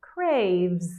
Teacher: Make sure you go from your V, make it very clear, V. Make your bottom lip vibrate from that V sound, and then go to your Z at the end. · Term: Z sound